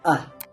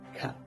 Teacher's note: This is a short central vowel pronounced with the tongue positioned low and in the center of the mouth.